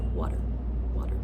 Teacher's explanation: This is when you have the sound t or d, a T or D. And we say it very quickly as a d sound. So, for example, we typically don't say water in American English. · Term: flap sounds